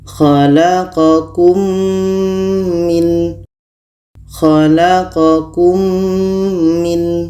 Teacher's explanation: Karena huruf yang sama, maka mim ini sudah masuk ke mim. Ini namanya idgham syafawi dan dibaca dengung 2 harkat.